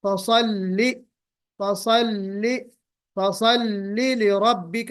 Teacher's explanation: स्वाद इसमें तफखीम है, इसमें जो है वो इस्तिला है, मोटा पढ़ा जाएगा, इतबाक भी है, और हल्की सी सफीर भी होनी चाहिए, और फिर लाम अलबत्ता बारीक होगा। · लाम पे जहर और शिद्दत दोनों की सिफत पाई जाएगी